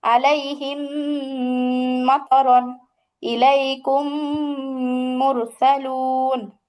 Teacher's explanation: মিম সাকিনের উপর যে পরে যদি মিম আসে তাহলে গুন্না করবেন, ওটাই হচ্ছে ঈদগাম গুন্না। মিম সাকিনের পরে মিম আসলে গুন্নার সাথে মিলিয়ে পড়তে হবে।